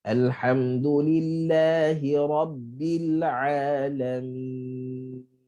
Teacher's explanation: nun bila dia mati maka dia ada bainiyah atau tawassut yang mana ada lepasan bunyi tetapi pendek. Okey, pendek sahaja. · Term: nun bainiyah